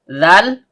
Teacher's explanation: Zal, ujung lidah bertemu dengan ujung gigi seri atas.